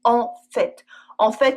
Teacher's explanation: With En fait, we also always pronounce the t.